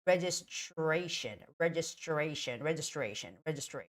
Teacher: there's the TR sound together and it's it sort of creates that the c h sound